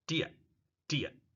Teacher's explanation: Do you becomes dia, dia. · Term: schwa